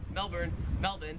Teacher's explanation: the australian accent just leaves the r off if it's ever in the last syllable of a word